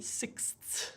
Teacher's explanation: when you've got your tongue in that S position, you've got to push it forward for the Th and then back again for the S.